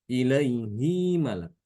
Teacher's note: Ditambahkan sedikit ya kecil, dua harokat.